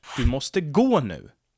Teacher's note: You can hear that I stress gå here.